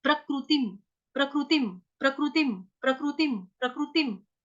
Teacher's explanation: प्रकृतिम, प्रकृतिम, प्रकृतिम, प्रकृतिम, प्रकृतिम आसान वर्ड है। क के नीचे जो री है उसको हम रू बोलेंगे क्योंकि संस्कृत है। तिम, हलंतम।